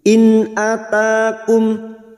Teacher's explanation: nun sukun bertemu hamzah idhar halki, nun sukun dibaca jelas tanpa mendengung.